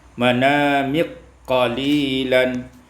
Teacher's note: diidghamkan kaf pada qaf menjadi manamik qalilan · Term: idghamul kaf fil qaf